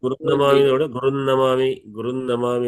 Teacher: గురునమామి అన్నప్పుడు నకారం వస్తది దిత్వ నకారం వచ్చింది